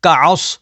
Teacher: صاد حروف مستعلیہ میں سے ہے تو اسے پر یعنی موٹا پڑھیں گے